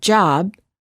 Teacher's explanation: we cannot continue the final B sound we stop the air flow by closing our lips therefore B is a stop if we quickly open our lips we can then release release